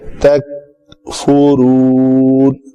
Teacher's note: فا کے اوپر پیش ہے، شفتین گول ہوں گے